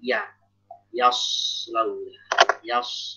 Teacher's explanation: Jadi jangan sampai huruf tebal malah menjadikan huruf tipis sebelumnya tebal. Contohnya yaslawna, shad tebal, ya tipis ya. Ya tipis, jangan sampai dibaca yaslawna, tapi yaslawna.